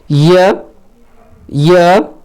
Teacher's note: य का उच्चारण स्थान जो है आपका तालव्य होता है, यानी तालु से इसका उच्चारण स्थान होता है।